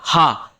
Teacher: है बिल्कुल सही बात है विसर्ग कंठ वर्ण है विसर्ग हा विसर्ग हा कंठ से आवाज आती है